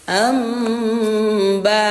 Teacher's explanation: Cara membacanya nun bertemu ba dirubah menjadi huruf mim, bunyi mim disertai dengung 2 harokat. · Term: iqlab